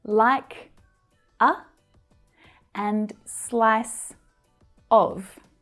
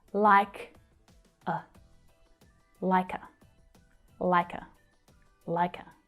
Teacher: both of these vowels are unstressed so the sound actually reduces to a schwa sound